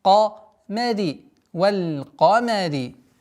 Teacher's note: Каф твердый, мим, ра мягкие